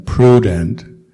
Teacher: And then U is pronounced as in prudent. So there's not a Y before it, it's just an U sound.